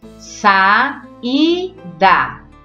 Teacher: O I é mais forte e forma hiato com a vogal A.